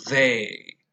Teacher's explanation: there is vibration when you say they at least in slow careful speeches